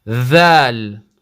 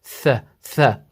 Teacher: Similar here, dhal is similar to tha in that they share the same articulation point. But with tha, You're blowing out air, and dhal, the air is kept inside, it's trapped inside.